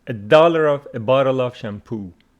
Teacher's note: A bottle of shampoo with a stress on poo